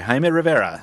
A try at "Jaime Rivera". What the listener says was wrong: I have a problem with the way you pronounce his name. You need to roll your R's. Jaime Rivera.